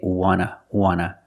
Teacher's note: the T in want is an NT, so we don't pronounce the T and we say wanna